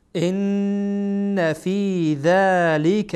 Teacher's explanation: ان اینجا نون مشدده غنه میشه